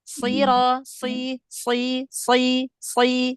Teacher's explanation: Jadi tetap diangkat pangkal lidahnya biar beda antara huruf sin dengan shad ya. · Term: huruf shad